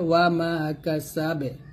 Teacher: যদি এইখানে ওয়াকফ ধরেন বা থামেন তাহলে বলতে হবে ওয়া মা কাসাবে, এই বাটা কলকলা করবেন